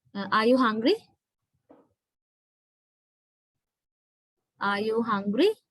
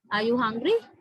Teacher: my voice is going up towards the end of the question. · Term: rising intonation